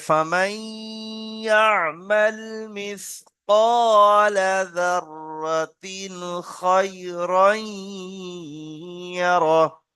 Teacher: ফামাই, এখানে গুন্না আছে ইদগামে নাকিস। তারপরে যাররাতিন, এটা হরফে হালকি ইজাহার।